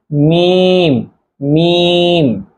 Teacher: ঠোঁটের যে অংশটুকু প্রথমে দেখা যায়, এই অংশ থেকে উচ্চারণ হচ্ছে মিম, মিম। 16 নম্বর মাখরাজ, মুখের খালি জায়গা হইতে মদের হরফ পড়া যায়।